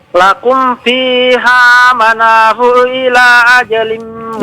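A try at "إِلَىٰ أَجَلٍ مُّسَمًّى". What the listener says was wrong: Ila, itu panjang lagi ya.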